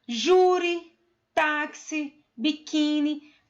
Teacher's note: Perceba que agora o acento não é mais na última sílaba, e sim na penúltima